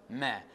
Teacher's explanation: the air is pushed through the nose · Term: bilabial nasal